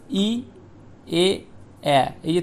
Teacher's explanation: উচ্চারণ করার সময় আমাদের জিহোবা মুখ বিবরের ভিতরে একদম সামনে অবস্থান করে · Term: সম্মুখ স্বরধ্বনি